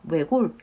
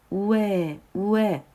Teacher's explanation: 이 부분은 단모음이라서 외골 이렇게 단모음으로 발음할 수도 있고요. 이중모음으로 발음하는 것도 허용을 합니다. 그래서 우에, 우에, 외골 이렇게 외골 이렇게 발음하는 것도 허용이 된다는 거 같이 살펴보시면 되겠습니다.